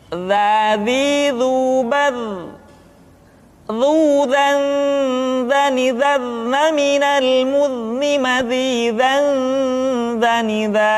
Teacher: Diucapkan dengan menyentuhkan ujung lidah dengan dinding dua gigi seri bagian atas seperti kita mengucapkan huruf tha. Ujung lidah boleh ditampakkan ataupun tidak nampak. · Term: huruf za